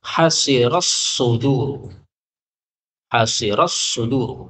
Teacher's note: Kemudian pada ayat 90 hasirat, ini taknya ketika dibaca dengan tak sukun maka boleh idgham kepada shad